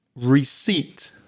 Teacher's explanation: And then we've got that strange EI sound, which is E. Receipt, and the second syllable is stressed. So, I've heard many students pronounce that P and say receipt.